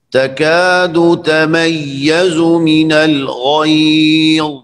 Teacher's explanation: غیظ غین بھی موٹا ہے اور ضا بھی